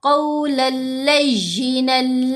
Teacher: اگر کوئی پڑھے قولل لیجینل تو یہ جو نل کی آواز کو لمبا کیا، یہ غنہ کرنے کی کوشش کی، لام پر غنہ نہیں کرنا، لمبا نہیں کرنا، جلدی پڑھنا ہے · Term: ادغام